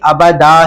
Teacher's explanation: اچھا ابدن پر جب وقف کریں گے تو اکثر دیکھا یہ گیا کہ بچے اس کو ابد پڑھتے ہیں، جبکہ یہ غلط ہے، یہ ابد نہیں ابدا ہے۔ وقف میں اس کو ایک الف کی مقدار کھینچیں گے